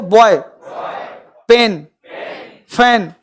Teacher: जब आपने फैन बोला होगा तो हवा का प्रेशर तेज हुआ होगा, जब आपने पेन बोला होगा तो कम हुआ होगा, और बॉय बोला होगा तो और कम हुआ होगा।